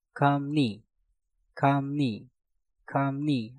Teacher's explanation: Kam diakhiri dengan miem, setelah itu diikuti kata yang diawali dengan real, maka realnya kita rubah menjadi suara nien. Menjadi kamni, kamni, kamni.